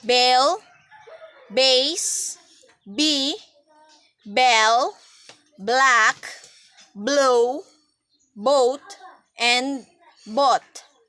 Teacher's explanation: release the breath with very weak aspiration let the vocal cord vibrate